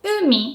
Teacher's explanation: You can kind of hear that u is pronounced with a high pitch. You don't put too much stress. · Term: pitch accent